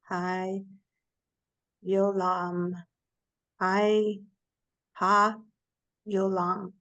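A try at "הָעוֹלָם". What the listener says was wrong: Good, so it's just O.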